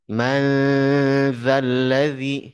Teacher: idgham funah penerapannya sama yumminu ikhfa Hakiki misalnya kita baca manzalladzi Nun Sakinah ketemu Dal sama nunnya juga akan menjadi ikhfa menjadi samar karena ketemu huruf Dal